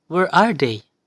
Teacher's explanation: They is the last term and it is stressed, so it requires high pitch. And as we approach the end part, we need to lower our voice. That is represented by a sliding line.